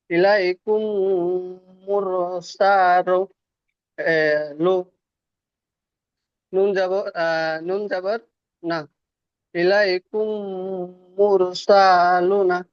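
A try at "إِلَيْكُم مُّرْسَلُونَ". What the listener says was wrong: হয়নি, টান ভুল হয়েছে। এই যে সিনটা টান নাই, এখানে টান হয়ে যাচ্ছে, এখানে টান আছে, এখানে টান হচ্ছে না। ইলাইকুম মুরসালুনা, আর আপনি বলছেন সালুনা, সালুনা। মুরসালু।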